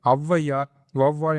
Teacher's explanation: ஐ மாதிரி தான் அவ்வும் தனித்து வரும்போது அதோட முழுமையான 2 மாத்திரை அளவில் வந்து ஒலிக்கும். இதே ஔவையார், வௌவால் என சொற்களின் முதலில் வரும்பொழுது தனக்குரிய 2 மாத்திரை அளவிலிருந்து குறைந்து 1.5 மாத்திரை அளவில் ஒலிக்கிறது. இவ்வாறு குறைந்து ஒலிக்கும் ஔகார குறுக்கம் எனப்படும்.